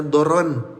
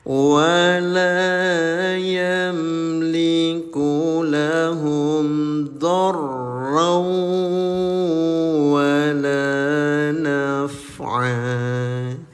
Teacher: Lampirkan bunyi tanwin pada huruf Waw disertai dengan gumaman selama dua harakat. Itu disebut Idgham Bigunnah .